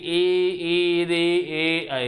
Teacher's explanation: देखिए आपकी आगे का जीभ का हिस्सा है वो तालु को क्या कर रहा है, छू रहा है, स्पर्श कर रहा है। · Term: अग्रस्वर